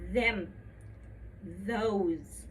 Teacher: You see my tongue is coming out just a little bit in between my teeth and I can feel the tickle.